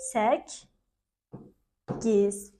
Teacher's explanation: yəni qoşa kdan ikincisi öz cingitli qarşılığına çevrilmiş oldu